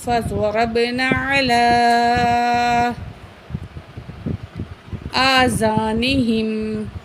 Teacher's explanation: فَضَرَبْنَا، فا زبر فا، ضاد زبر زغا، را زبر با، رب، فَضَرَب، نون الف زبر نا، فَضَرَبْنَا، عین زبر آ، لام کھڑی زبر مد، لا، علا. تو یہاں علا پہ کھڑی زبر بھی ہے اور مد بھی ہے، تو یہاں ہم اس کو 4 الف کے برابر بڑی مد کو پڑھیں گے اور کھڑی زبر کو 1 الف کے برابر کھینچیں گے، ٹھیک ہے.